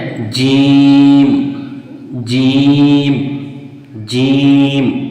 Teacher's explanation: زبان کا بیچ اور اس کے مقابل اوپر کا تالو، یعنی زبان کا بیچ والا حصہ اور اسی کے مقابل جو اوپر کا تالو والا حصہ ہے وہاں سے یہ جیم نکلتا ہے